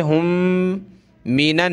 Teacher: میم پر ناک میں آواز پیدا کریں گے